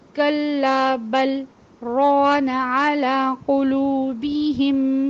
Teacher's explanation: تو سکت چونکہ لازمی ہوتا ہے، سکت نہ کرنے سے معنوں میں تبدیلی آتی ہے، اس لیے یہاں پہ لام کو ظاہر کر کے ایک لہجے کے لیے رکنا ہے جس میں اپنی سانس نہیں توڑنا